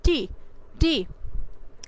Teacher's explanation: The tip of the টাং touches the alveolar রিস, আমাদের যে টাঙের যে আগাটা আছে, ডগাটা আছে, এই ডগা কি করে? অ্যালভিউলার রিজের সাথে গিয়ে টাচ করে। তো অ্যালভিউলার রিজ এবং আমাদের জিহ্বার আগা কিংবা ডগা, এটার ফলে যে এই দুইটা যখন একসাথে আসে তখন আমাদের যে সাউন্ডগুলো উৎপন্ন করা হয় এগুলোকে অ্যালভিউলার সাউন্ড বলা হয়।